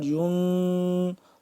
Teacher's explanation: صاد بھی موٹا را بھی موٹا